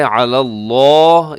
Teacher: عَلَى اللَّهِ الْكَذِبَ، یہاں لفظ اللہ کے لام سے پہلے لام کے اوپر زبر ہے، عَلَى اللَّهِ، اسے آپ نے موٹا پڑھنا ہے